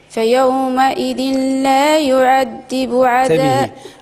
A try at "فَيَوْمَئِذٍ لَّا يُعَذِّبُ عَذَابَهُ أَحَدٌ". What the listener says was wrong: انت عندك مشكل في الدال، في الذال، لا يعذب. لا يعذب، انتبهي كيفاش كنطقها، فيومئذ لا يعذب،